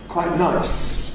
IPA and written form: ˈkwaɪʔ ˈnaɪs (quite nice)